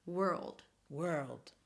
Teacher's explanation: she has this really nice dark L